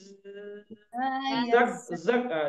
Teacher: desisnya lebih kedengar ya. Daripada kalau zal kan tipis dia. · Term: zai